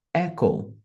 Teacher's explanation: percebam que em inglês a enfases é na primeira sílaba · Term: ênfase